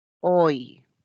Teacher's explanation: Acá hay una abierta más una cerrada y se pronuncia en una sola emisión de voz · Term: diptongo